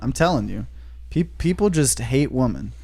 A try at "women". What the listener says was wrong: The way you're pronouncing, I thought it sounds like you're saying they hate a particular woman.